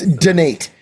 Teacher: emphasis on the second syllable of the word donate